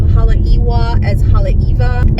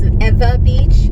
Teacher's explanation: you would pronounce W as a V when it's in the middle of the word, as opposed to the beginning of the word